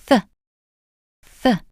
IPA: θ